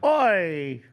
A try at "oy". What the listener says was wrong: You said the right word, but you said it the wrong way. You got the oi right. You said it like a Cockney, like, oi, oi, oi.